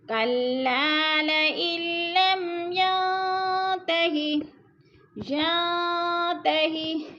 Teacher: نون ساکن کے بعد تا حروف اخفا میں سے ہے تو اخفا کریں گے، ناک میں آواز لے جائیں گے